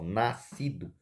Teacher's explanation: o som do S aqui, ele é engolido pelo C, certo? Observem, ele é engolido, ou seja, essas duas letrinhas, o S e o C, está formando o som de uma letra só. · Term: dígrafo